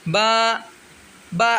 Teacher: دونوں ہونٹوں کی اندرونی تری گیلے حصے کے ملنے سے با ادا ہوگا